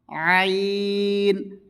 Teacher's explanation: আইন গলার মধ্যস্থল থেকে